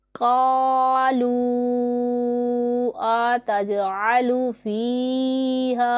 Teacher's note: قالوا اتجعل فیہا، یہاں پر واو مدہ ہے، اس کے بعد یہ والا حمزہ دوسرے کلمہ میں آ رہا ہے تو یہاں پر مد منفصل ہوگا جسے ہم 2 اڑائی الف کے جتنا کھینچ کے لمبا کر کے پڑھیں گے